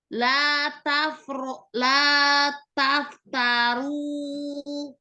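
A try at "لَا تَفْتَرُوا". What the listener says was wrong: Fa-nya lebih sembur lagi. La taftaru. Harus sampai sekuat itu ya.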